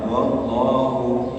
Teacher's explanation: Lafzul jalalah didahului dengan huruf tebal. Huruf huruf fathah maka dia tebal.